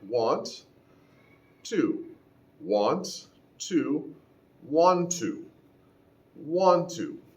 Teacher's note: the deletion of one of the t sounds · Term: want to blend